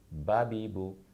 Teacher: दोनों होठों की तरी वाला हिस्सा, यानी अंदरूनी हिस्सा जब होठों का आपस में मिले तो बा अदा होता है। मखरज के एतबार से इसे शफ़विया कहते हैं।